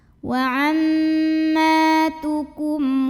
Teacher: Karena mim sukun menghadapi huruf selain mim dan ba, maka mim sukun kita bunyikan dengan jelas bunyi M-nya ya, tidak perlu ditahan. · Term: izhar syafawi